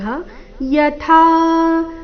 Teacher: ಥಾ ಥ ಮಹಾಪ್ರಾಣ ದೀರ್ಘ